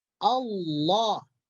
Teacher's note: apabila sebelum lafzul jalalah itu baris fathah, maka lafzul jalalah dibaca tafhim tebal.